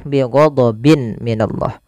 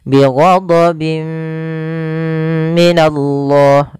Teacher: Karena bertemu mim, tanwinnya dimasukkan, itu yang kita namakan dengan idgham. Bi gunna disertai dengan gunnah masuk ke rongga hidung kita. Bi ghadabim minallah sambil ditahan 2 harokat.